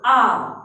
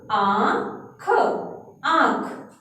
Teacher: जो चंद्र बिंदु की मात्रा है वह नाक और मुंह दोनों से निकलती है